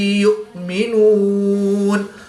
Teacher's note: حمزہ ساکن ہے جس کو ہم جھٹکا دے کر پڑھیں گے